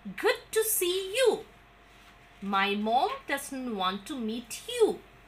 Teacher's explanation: I have given the falling tone on the last word of each sentence